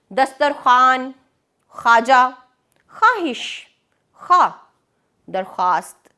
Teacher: یہ واو مدولہ کے الفاظ ہیں۔ ان میں ہم نے واو لکھا تو ہے لیکن کہیں پر بھی یہ لکھا گیا واو ادا نہیں کیا گیا